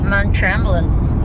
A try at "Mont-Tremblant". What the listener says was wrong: Mont. Yung O magiging A.